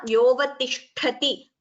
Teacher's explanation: Tha Mahaprana should be clearer.